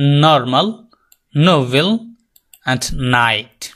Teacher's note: আর বাংলায় নাসিক্য বর্ণ যেগুলো আছে সেগুলোর মত number টু sound alveolar sound টাং touches alveolar · alveolar sound. The tongue touches the alveolar ridge. জিহ্বা উপরের দাঁতের তালুর, উপরের দাঁতের গোড়ালির যে শেপটা রয়েছে মাংসের ভিতরের দিক দিয়ে, সেখানে টাচ করবে।